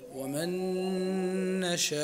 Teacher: فالنون تدغم في النون وتشدد النون الثانية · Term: النون مدغمة